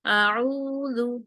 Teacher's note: آ کو لمبا نہیں کرنا، ایک حرکت پڑھنا ہے اور فوراً عین پہ چلے جانا ہے، اعوذ، ٹھیک ہے، او کو 2 حرکت کریں گے، اعوذ۔